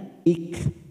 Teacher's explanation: sifat dari huruf Kaf ini mempunyai sifat Hames saat kita mewakafkan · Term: sifat hamas